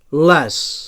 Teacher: So alveolar lateral sonor